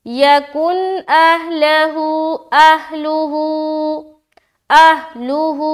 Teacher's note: نون ساکن کے بعد حمزہ، اظہار کریں گے، رکنا نہیں ہے، پڑھ کر نکل جانا ہے۔